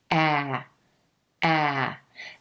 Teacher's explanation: this sound is a jaw-dropper meaning the jaw comes down as you make the sound ah ah ah the lips pull back a little bit at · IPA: /æ/